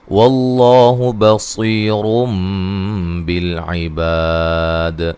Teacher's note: لفظ اللہ کو موٹا ادا کرنا، اس سے پہلے زبر ہے. بصیر صاد کو موٹا ادا کریں گے اور صیہ مدہ ہے.